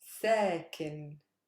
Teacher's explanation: Stress is on sa because that's not a super heavy syllable.